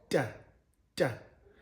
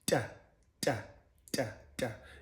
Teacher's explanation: all of these sounds are produced by your tongue being placed in the alveolar ridge and blocking the sound from there and then releasing it. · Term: dental alveolar